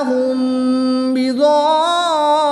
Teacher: میم ساکن کے بعد با آ جائے تو اخفاء شفوی ہوتا ہے، یہاں پر بھی غنہ کر کے پڑھیں گے. الف مدہ کے بعد سکون اصلی ہے تو یہاں پر مد لازم ہوگی، 3 سے 5 الف تک کھینچ کر پڑھیں گے۔